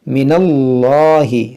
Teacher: اس میں جلالت سے پہلے زبر ہے، تو اس کو ہم موٹا پڑھیں گے، من اللہ، صرف اسی لام کو موٹا پڑھا جاتا ہے، باقی اس کے علاوہ جتنے بھی لام ہیں سب باریک۔